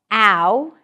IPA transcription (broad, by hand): æʊ